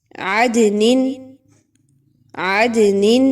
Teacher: دال کو بھی ہلایا جا رہا ہے، دال کی آواز کو ہلا کر پڑھا جا رہا ہے۔